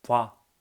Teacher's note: 보다의 오와 그 다음에 아가 합치니까 와가 되는 거지 뭐. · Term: 모음 축약